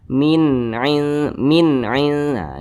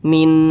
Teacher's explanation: cara bacanya itu jelas tidak berdengung jadi jangan dipanjangkan jangan ditahan jadi dibaca Min Minah gitu pendek Min Jangan dibaca min itu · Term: izhar halqi